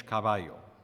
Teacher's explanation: V should be bilabial as in Spanish caballo